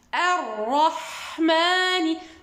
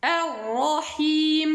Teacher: les 2 ra ici sont emphatiques, mufakhama, à cause de la voyelle de fatha qui est au-dessus d'elle